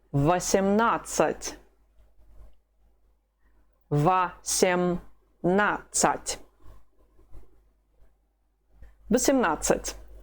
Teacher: The letter O is not stressed. How do you pronounce it? Ah.